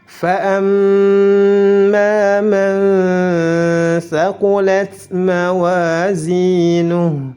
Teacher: mim bertasydid dihukumi gunnah, ditahan 2 harakat disertai dengan gunnah. Man thaqulat, tidak boleh dibaca man karena dihukumi ikhfa, disamarkan nun sukunnya.